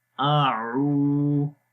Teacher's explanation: حمزہ کو گلے کے نیچے والے حصے سے اور عین کو گلے کے درمیان والے حصے سے پڑھیں گے